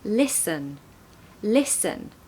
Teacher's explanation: we've got the stress on the first syllable · So lis-n. Because the second part of the word is not stressed, it's quieter, so that's the part of the word that contains the schwa sound.